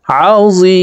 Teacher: জি এখানে তিন আলিফ টেনে মিমকে সাকিন করতে হবে, কারণ মদের হরফের বামের হরফে ওয়াকফ হইলে মদ্দা আরজি তিন আলিফ টানিয়া পড়িতে হয়।